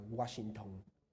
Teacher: Un ejemplo muy claro es la palabra Washington, que al final se hace un cierre glotal.